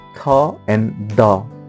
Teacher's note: Dental using the tongue and upper teeth, as for example tha and da.